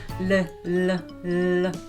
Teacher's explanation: Anyway, so and then it's just touch it, and then air comes the side of your tongue because your tongue block the airflow. So your when you pronounce L sound in English, the air comes through the sides of your tongue.